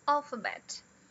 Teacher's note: Um outro padrão é com a primeira stressed. E a terceira, secondary. E as outras, unstressed. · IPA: /ˈælfəbet/